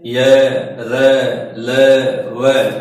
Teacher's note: उच्चारण करते समय धवनी अंदर की ओर खींची हुई प्रतीत होती है अंदर की और जाके टच होती है ऐसा लगता है जैसे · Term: अंतस्थ